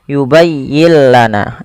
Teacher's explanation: suara nunnya kita hilangkan dan kita masukkan langsung kepada huruf lamnya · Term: idgham bila gunnah